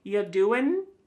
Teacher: Listen to that G at the end. Ya doing, it's gone.